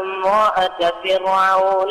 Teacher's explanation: pay attention to the ra of the word فِرْعَوْن. It is very thin.